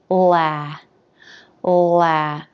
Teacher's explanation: Then the a as in bat vowel. So the tip of the tongue goes down behind the bottom front teeth. The jaw drops open and the back of the tongue lifts.